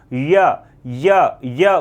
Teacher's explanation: ऊपर जीवा स्पर्श कर रही है तो इसका भी उच्चारण स्थान क्या होता है? तालु।